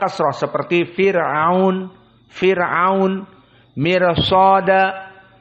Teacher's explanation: Muraqqaqah karena sebelumnya kasrah seperti Fir'aun, mirsada. Maka tidak mirsada tapi mirsada.